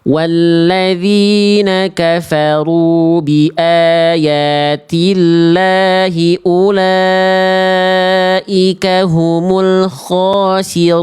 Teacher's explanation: Ro domah harus dibaca tebal.